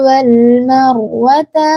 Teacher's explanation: Dalam kata wal marwata ini rnya tebal ya, tebal ya.